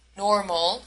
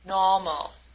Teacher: She pronounces the alveolar fricative r in medial position as the German r, which is not used in English. She does this in the word normal.